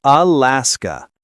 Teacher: Alaska. Stress on the middle syllable. Keep that last sound crisp.